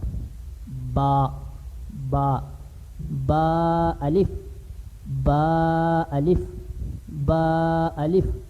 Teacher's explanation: با کا مخرج تھا دونوں ہونٹوں کی اندرونی تری آپس میں ملے تو یہ ادا ہوگا